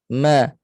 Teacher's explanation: selain dua Bibir dia juga di rongga hidung ma dia naik ke hidunglah masa sebut Ma tu ma kemudian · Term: huruf mim